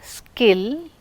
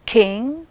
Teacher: And let us see k sound. Skill, no aspiration. King, yes, aspiration because it is receiving stress.